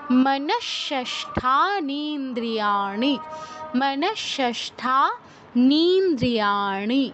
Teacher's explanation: মনস বিসর্গর পর দেখুন মূর্ধনস থাকায় বিসর্গস্থলে মূর্ধনসর হসন্তর মতো উচ্চারণ হচ্ছে।